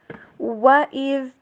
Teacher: وَإِذْ، و W sound کے پر ذال، زا نہیں بلکہ ذال، زبان کی نوک کو سامنے والے اوپر والے دو دانتوں سے باہر نکالیں گے تھوڑا سا، تب جا کے ذال ادا ہوگا